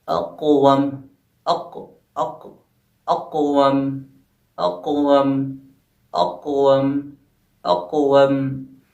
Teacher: قلقلہ صغریٰ میں آواز ہماری کم ٹکرائے گی، یعنی جو حروف ہے وہ جو ہے ہمارا کم ٹکرائے گا۔